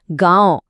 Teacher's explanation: इसमें हवा नाक और मुंह दोनों से आती है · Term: अनुनासिक